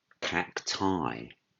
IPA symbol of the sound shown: aɪ